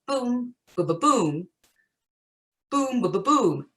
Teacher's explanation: As I was scanning through my verse, I found a lot of my verse lines had a trochee in the first foot, and a trochee is an inverted line. So it starts out with a stressed syllable and then it's unstressed